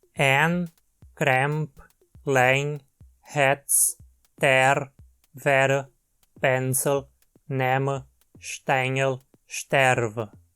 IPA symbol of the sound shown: ɛ